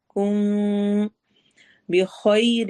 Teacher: میم ساکن کی آواز کو تھوڑا سا ہم چھپا کے پڑھتے ہیں، اخفا کرتے ہوئے پڑھتے ہیں۔ · میم پر ادغام ہو رہا ہے، یہاں پر ہم نے غنہ کرتے ہوئے اس کو لمبا کرنا ہے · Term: اخفا شفوی